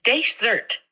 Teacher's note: The pronunciation here is desert, with the emphasis on the first syllable